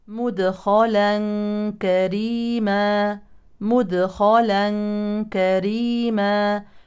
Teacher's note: هذا التنوين يليه كافي يعني اخفاء حقيقي